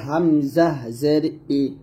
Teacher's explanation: আমরা গলার শুরু থেকে [মিউজিক] বলবো এখন চাপ দিয়ে বলতে হবে প্রথমে উচ্চারণ হামজা গলার শুরু থেকে আসবে